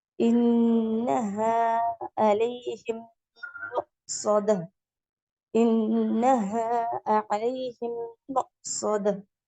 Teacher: மீமும் நூனுக்கும் குன்னா கொடுக்கப்பட்டது அப்படின்னா நம்ம என்ன பண்ணுவோம், மூக்கல்ல குன்னா பண்ணி ஓதுவோன்னு